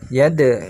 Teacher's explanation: Tapi pantulkan kecil aja. Qalqalah sughra.